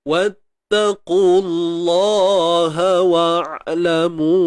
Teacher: huruf qaf ni baris depan tebal selamanya, muncung bibir, qu. Terus masukkan pada bunyi kalimah Allah tu.